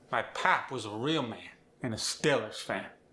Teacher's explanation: Let the air resonate through your nose, especially when pronouncing vowels like the A in man or the O in pop. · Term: nasal quality